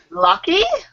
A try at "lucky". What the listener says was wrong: Lucky. Not looky. But lucky. Yeah. Almost kind of like short O. It's almost like lucky.